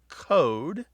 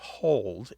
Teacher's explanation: They drop L sounds before what are known by linguists as back vowels such as O. These are vowels literally pronounced in the back of the mouth.